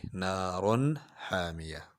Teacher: نار تنوین ہے، اس کے بعد حا حروف حلقی ہے تو اظہار کریں گے